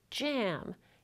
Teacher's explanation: You start off the sound with a stop d, and then release the stop, but still keep the articulators close together to make a fricative j. Affricates aren't listed on the IPA chart because they're a double articulation, a combination of a stop followed by a fricative.